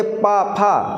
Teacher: ओंठ जुड़ रहे हैं आपस में, ये ओष्ठ वर्ण है, ओंठों से उच्चारण हो रहा है इनका